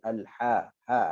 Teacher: Ada suara tetapi angin lebih dominan. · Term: ha pedas